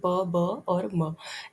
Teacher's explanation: अब चलिए place of articulations को देख लेते हैं, जैसे बाइलेबियल, दोनों लिप्स से जो साउंड बनता है उसको बाइलेबियल बोलते हैं